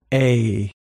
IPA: eɪ